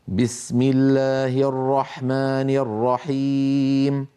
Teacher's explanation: بسم الله شديد مجهوره هي حرف قوي الباء قوي جدا لان فيها شده فيها انحباس الصوت والنفس